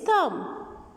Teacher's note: So in thumb, there is no sound of B